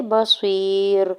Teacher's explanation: تعملون بصیر، با کے اوپر سنگل زبر جلدی سے ادا کریں گے، یا ساکن سے پہلے صاد کے نیچے زیر ہے، یا مدہ ہو رہا ہے، دو حرکت کھینچ کے ادا کریں گے، را کے اوپر دو پیش کی تنوین ہے اور آگے آیت کا وقف ہے، تو وقف کرنے کی صورت میں را کو ساکن کر دیں گے